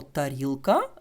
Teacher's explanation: і д наприклад візьмемо українське слово тарілка коли ми кажемо тарілка щоб вимовити звук т в нас язик упирається в зуби